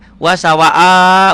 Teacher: satu Alif dua ketukan berubah menjadi lima lima ketukan atau lima harakat atau dua Alif setengah satu Alif nilainya dua ketukan dua harakat